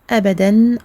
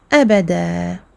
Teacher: Ça veut dire que on va prolonger de 2 temps avec une seule fatha. Au lieu de dire abadan, on va faire abada. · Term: maddul iwad